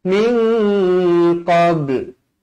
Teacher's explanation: nun bertemu qaf ikhfa hakiki dengan dua harakat